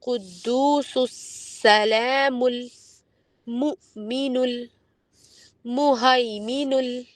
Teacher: سین کی صفت ہوتی ہے سیٹی کی آواز. یہ آواز آنی چاہیے.